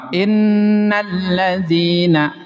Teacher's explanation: bunyi alif lamnya enggak ada. Enggak nampak. Innalladzina ditasdid. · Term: alif lam syamsiyah